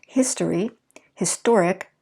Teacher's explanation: is going to add that to be an adjective historic so we shift our stress from the first syllable to the second syllable once we add the ic